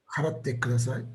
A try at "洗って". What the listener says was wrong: Not pay, but wash sounds very similar. It's so close. It's Adal rather than Hadal.